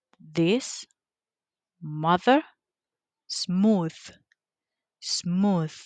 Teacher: The point of articulation it is dental, the, or interdental, the. The manner of articulation it is fricative.